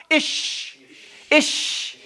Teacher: roof of your mouth say ish you feel it now when your middle tongue raises up to almost the back angle part of the roof of your mouth ish ish just say it over and over again till you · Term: sheen